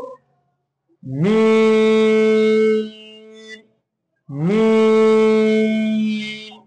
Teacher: চার আলিফ করে টান নিতে হবে